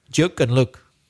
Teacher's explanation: Mine's got a bit longer because I've been living out of Belfast for a while and I've started copying other accents. But in Belfast, there is no long oo sound.